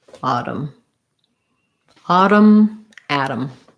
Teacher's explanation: they both use a flap because t and d in the middle both tend to use flap